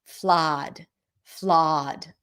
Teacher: Just think of it like as a very open O.